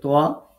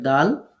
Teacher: এই দুই দাঁতের গোড়ার সাথে জিহ্বার আগাটা লাগাবো তাহলে তিনটা হরফ উচ্চারিত হবে